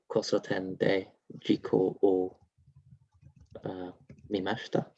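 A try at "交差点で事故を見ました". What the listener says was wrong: Yeah, good. Mimashita.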